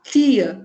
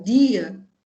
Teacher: Então, tia e dia, toca e doca, tem diferença aqui na vibração das cordas vocais. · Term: vozeamento